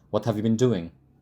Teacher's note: we don't rise by the end it's falling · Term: ination